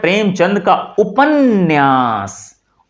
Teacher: उपन्यास न का उच्चारण हम दो बार करते हैं।